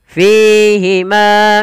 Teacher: Mad thabi'i panjangnya dua harakat lafal fi dan ma harus sama tidak boleh dibedakan ya kesalahan yang sering terjadi dalam baca mad thabi'i itu yaitu beda-beda mad thabiinya ada yang dua ada yang lebih harusnya sama.